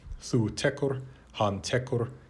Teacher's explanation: there is now a svara bhakti vowel, so-called, between the K and the R in the second and third person singular. This is standard in modern Icelandic, where Old Norse had a consonant followed by an ending R.